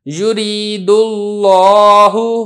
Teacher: لفظ اللہ سے پہلے پیش ہے لہذا لفظ اللہ کا جو لام ہے یہ موٹا کر کے ادا کیا ہے۔